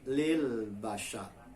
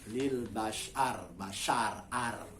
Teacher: Ro-nya menjadi tafkhim atau tebal karena sebelum berhenti di huruf ro ada tanda baca a. Lil bashar, bashar, ar.